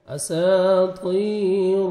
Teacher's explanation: 1 second کھینچنا ہے، طا موٹا کر کے پڑھنا ہے، اساطیر، را کو مر پیش ہے، را کو موٹا کر کے پڑھیں گے اور لام کے ساتھ ملائیں گے، لام کو آپ نے ہلانا